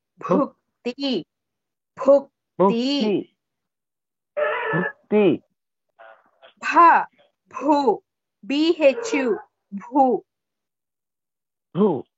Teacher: Bhukti Bha is Mahaprana. You have to stress.